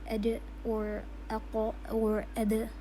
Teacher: Uh when I pronounce this word, the sound you will you will figure out that the sound is cut. There is no running of the sound because we close the articulation point. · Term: the strength